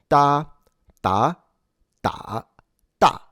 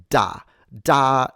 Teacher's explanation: it's a sound that is in fact a little closer to a T that isn't uh aspirated